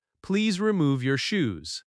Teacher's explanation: You hear the stress on remove and shoes, so you understand quickly.